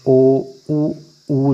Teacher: इनको बोल के देखिए तो आपका मुंह एकदम गोल बन जाएगा, तो ये वृत्तमुखी स्वर कहलाएंगे।